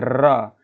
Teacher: तो देखते हैं जिन वर्णों का उच्चारण क्या होता है, उच्चारण करते समय जीवा में 2 या 3 बार क्या होता है, कंपन होता है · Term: प्रकंपित व्यंजन